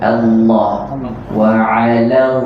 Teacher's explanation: Allah tebalkan sebutan lam tu sahaja. Naikkan lidah dia